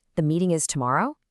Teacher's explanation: See that little lift at the very end? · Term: rising tone